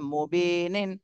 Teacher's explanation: নুনে জজম দিতে হবে আর এর আগে তিন আলিফ টান দিতে হবে